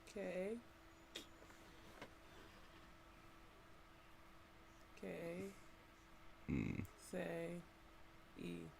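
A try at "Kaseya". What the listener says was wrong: Nah, that's Ka. Cause that's the vowel. Cassia. I think that sounds more like it. Cause like, how you gonna say K or Ka as your vowel? I thought you had a Y or something there.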